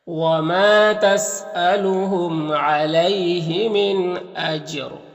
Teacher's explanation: یہاں پر جیم حروف قلقلہ میں سے ہے اور جیم کے اوپر جزم ہے تو جیم میں قلقلہ ہوگا، یعنی اس کو ادا کرتے وقت جیم کی آواز اپنے مخرج سے ٹکر کھا کر الگ ہو جائے گی